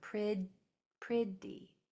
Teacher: it's just a stop where the airflow stops and then it's released instead of spitting it out like spit. It can be just a stop sound pretty.